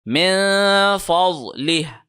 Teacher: من فضلہ، نون کے اوپر ہم نے اخفا کیا، ضاد کو موٹا کر کے لیفٹ سائڈ سے پڑھا